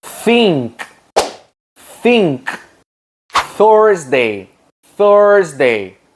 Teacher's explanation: we need to put our tongue between our teeth like this. Then blow earth. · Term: voiceless sound